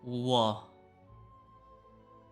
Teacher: It's basically you're adding u and then forming it into an a.